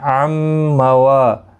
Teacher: عن موا، میم مشدد پر گنہ ہوگا، یہاں پر نون ساکن کے بعد یرملون کا میم ہے، ادغام مع الگنہ ہوگا، گنہ کے ساتھ پڑھیں گے